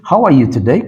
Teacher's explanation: just use stress the second syllable